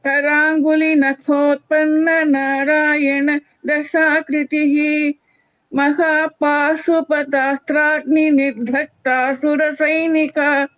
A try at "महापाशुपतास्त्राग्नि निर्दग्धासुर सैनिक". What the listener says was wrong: Bhagini, in the second line, the second dha is a Mahaprana.